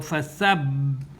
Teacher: this ha is sakin. It's going to be assimilated to the ba, which is mushaddada. · now the ba is held for 2 counts